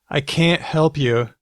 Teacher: can is just can it's not stressed but can't can't is stressed so you say I can't help you it gets the stress